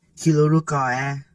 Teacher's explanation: the nasal sound becomes a l sound when ni contracts to the following word, and the r sound is lost.